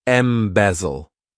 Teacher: this verb has 3 syllables, and the stress is on that second syllable.